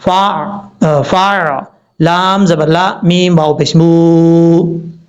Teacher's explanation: فا، فا، لام زبر لا، میم واو پیش مو، یہاں پر میم کے بعد واو ہے، واو ساکن سے پہلے پیش تو واو مدہ ہوتا ہے، ایک الف کی مقدار، اس کو لمبا کر کے پڑھیں گے